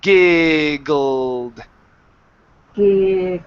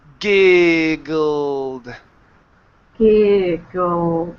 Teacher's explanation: keeping the vibration between the vowel and the G or so the I and the G.